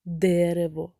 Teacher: так в слові дерево наголос падає на перший склад тобто в слові дерево перший склад є наголошеним а другий і